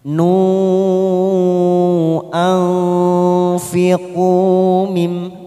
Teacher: nun sukun bertemu fa, namanya ikfa ausat, kita samarkan 3 ketuk.